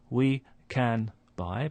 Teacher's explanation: And then the 4th possible way of pronouncing this word can is in phrases like we can buy, where the n sound at the end of can is just before a b, so it starts to resemble a m sound